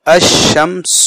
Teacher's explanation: لکھنے میں تو لکھا جائے گا الف بھی لام بھی، لیکن لام پڑھا نہیں جائے گا، الف کو سیدھا سے شین سے ملائیں گے الشمس، اور شین مشدد ہو کر کے 2 مرتبہ پڑھا جائے گا. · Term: حروف شمسی